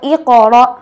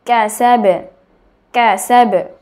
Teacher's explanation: কফের উচ্চারণ হলো ই কর, কলকলা হবে, আর কাফের উচ্চারণ ক্যাসাবে, ক্যাসাবে, কলকলা হবে না